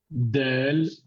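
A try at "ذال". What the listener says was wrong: Dhal. Ici, c'est pas la même chose. Del, Dhal. tes dents, elles sont comme ça, ok? Et ça, c'est ta langue. Elle fait un peu comme ça, tu vois? Elle sort un tout petit peu ici. Et elle touche un peu les dents. Dhal,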